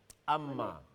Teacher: শক্তভাবে মিলে শক্তভাবে মিলেছে শক্তভাবে মিলিয়ে আদা হয় আব্বা আর মিম মিম হলো দুই টুটের শুকনো জায়গা থেকে সফটলি জয়েন হয়